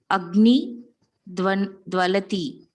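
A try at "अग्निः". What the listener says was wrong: You cannot drop the visarga. It is Agnihi. When you say Agni, it is Pradipadikam. How can you use Pradipadikam in the language? Cannot use.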